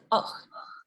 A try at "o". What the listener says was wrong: Ahí vas, más o menos. No me lo dividas. Que salga junto con la vocal.